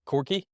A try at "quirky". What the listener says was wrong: Quirky. quirky. Is that how you're saying it? No, it's QUI, I think.